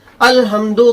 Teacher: اپنی آواز کو نرم کر لیں، باریک پڑھے، یعنی ہا درمیانی حلق سے نہ نکال کر شروع حلق سے نکالے